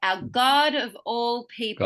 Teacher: our doesn't need to be emphasized, but God is very important. people is important, right?